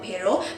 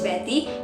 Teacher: the tongue makes very brief contact its space of articulation is dental or alveolar which means it